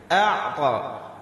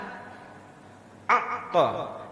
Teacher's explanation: Huruf ain ini ketika diucap itu tidak boleh langsung tertahan. A'ta. Dia berjalan sedikit.